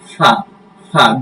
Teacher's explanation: দুই ঠোঁটের মাঝখানে নিচের ঠোঁটের উপরের দাঁতটা লাগবে